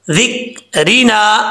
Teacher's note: ज़िक्रिना, आइन को अपने मखरज से अदा करना है, नून साकिन के बाद ज़ाल आ रहा है, यहाँ पे नून साकिन का इख़फ़ा होगा, एक अलिफ की मकदार गुन्ना किया जाएगा